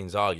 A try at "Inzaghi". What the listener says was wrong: It's Inzaghi. There's no R before the G.